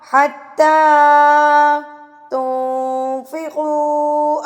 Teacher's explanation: اخفاء کریں گے، یعنی کہ اس کو ناک میں چھپا لیں گے۔